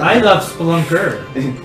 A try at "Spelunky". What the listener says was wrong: Why did you say it with three syllables this time, though?